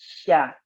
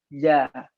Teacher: Jadi kalau kita ucapkan sya, dia maftuh berbaris fathah. Nampakkan tafashinya dulu. Tanpa memonyongkan mulut.